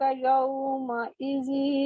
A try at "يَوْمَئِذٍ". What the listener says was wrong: زی لمبا ہو گیا یومئذ.